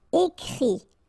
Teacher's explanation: phonetically you pronounce I because final T is not pronounced